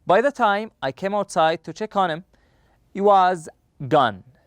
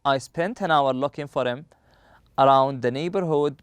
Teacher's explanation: the auxiliary verbs once we run into them in any sentence the H at the beginning of these words is usually or often left out